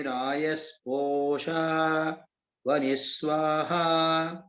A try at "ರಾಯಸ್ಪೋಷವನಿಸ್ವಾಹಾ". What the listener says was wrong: ರಾಯಸ್ಪೋಷ ವನಿ split ಮಾಡಬೇಡಿ. ರಾಯಸ್ಪೋಷ ವನಿಸ್ವಾಹ ಇಲ್ಲ split ಅದು ಸ್ವಲ್ಪ ಅರ್ಥ ಭೇದ ಆಗುತ್ತೆ.